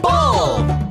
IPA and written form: bəʊl (bowl)